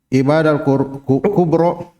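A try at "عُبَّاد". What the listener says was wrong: Ubba tasdid ya.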